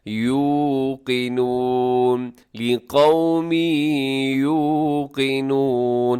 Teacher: اکثر یوقنون پڑھ دی جاتی ہے، یہاں بھی جھٹکا دے دی جاتا ہے، یہاں حمزہ نہیں ہے بلکہ یہ واو مدہ ہے، واو ساکن سے پہلے پیش، نرمی کے ساتھ تھوڑا لمبا کر کے، یوقنون، لقوم یوقنون، قاف موٹا رکھیے گا۔